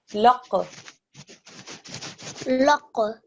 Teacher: this is a thick and heavy sound. This is a qaf, but it's also a qalqala sound.